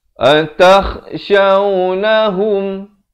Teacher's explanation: kha di hujung kerongkong. Atakhshawnahum, jim kecil, waqaf jaiz, boleh berhenti di sini.